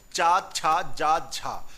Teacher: तो चा, छा, जा, झा ये कैसे हैं? स्पर्श संघर्षी व्यंजन हैं।